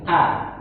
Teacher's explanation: Hamzah itu dari aqsal halqi. Tenggorokan yang jauh, tenggorokan yang paling bawah.